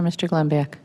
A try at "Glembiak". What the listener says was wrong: Oh, and the U is silent, and it's Glembick.